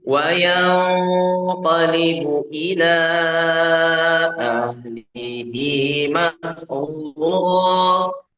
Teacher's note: Hi-nya 2 harokat, itu mad silah qasirah